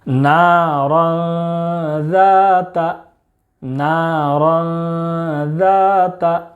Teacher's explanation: تنوین کے بعد حروف اخفاء کے 15 حروف میں سے ذال ہے، اس لیے تنوین کی آواز کو ناک میں چھپا کر پڑھیں گے